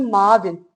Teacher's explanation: Əvvəllər ü düşürdü, a uzanırdı, olurdu maavin.